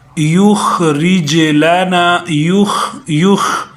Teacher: یہ خا اس کا جو مخرج ہے نا یہ وہاں سے نکلتی ہے جہاں ہم جب کھانسی کرتے ہیں